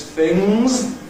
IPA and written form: θɪŋz (things)